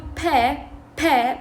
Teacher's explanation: الهواء راح يبقى محبوس بداخل الفم الى ان ينفتح الفم ويقول ب والهواء يخرج، فهذه شنو stop نسميه.